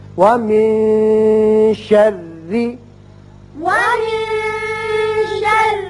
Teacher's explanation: یہاں نون کے بعد شین حروف اخفا میں سے ہے لہذا یہاں اخفا ہوگا، ومن شر، ومن شر اور را باریک بھی پڑھیں گے اس لیے کہ نیچے زیر ہے.